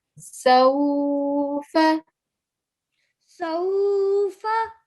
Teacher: you need to softly elongate for 2 seconds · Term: vowel lean